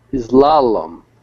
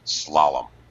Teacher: no vowel sound before the S